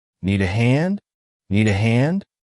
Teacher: notice you do the rising intonation to make it sound like a question